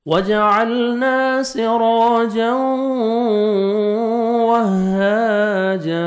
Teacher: وہاجا ہا کو بھی 1 سیکنڈ کھینچنا ہے، الف مدہ، اور جیم کو بھی جب سٹاپ کریں گے تو الف مدہ ہو جائے گا، جیم کو بھی 1 سیکنڈ آپ نے کھینچنا ہے